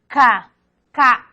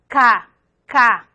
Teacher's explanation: la K consonántico velar. K. K. La lengua toca a la parte anterior al paladar.